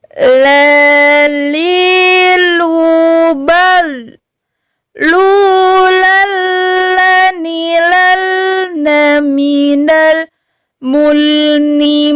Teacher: yaitu maju lagi ke depan langit-langit bagian yang agak terluar sedikit masih ujung lidah dengan langit-langit hurufnya yaitu huruf lam · Masih ujung lidah dengan langit-langit, hurufnya yaitu lam. Huruf lam ini masih sama sifatnya yaitu tawasud. Suara kita tidak pula tertekan dan tidak pula mengalir. Jadi sedang-sedang saja.